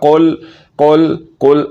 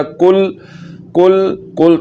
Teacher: تو جو ڈنڈے والا کاف ہے ایک تو یہ بریک پڑھا جاتا ہے، اور دوسرے نمبر پر اس حرف کا جو مخرج ہے وہ ہے زبان کی جڑ اور تالو کا سخت حصہ۔ تو ڈنڈے والے کاف کو زبان کی جڑ اور تالو کے سخت حصے سے ادا کیا جاتا ہے اور دوسرے نمبر پر اس کو موٹا نہیں کیا جاتا